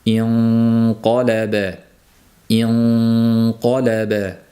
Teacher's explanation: ixfo qilib nunni mahrajiga tekkizmasdan to'g'ridan to'g'ri qofga o'tib dimoq bilan talaffuz qilishlari ham mumkin.